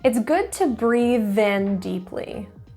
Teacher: Notice I linked breathe in.